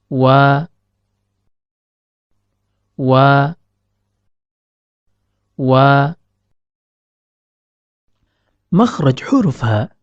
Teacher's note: dari pertemuan antara bibir atas dan bibir bawah namun perlu diperhatikan tatkala melafazkan huruf wau kedua bibir tidaklah merapat akan tetapi terdapat rongga antara bibir atas dan bibir bawah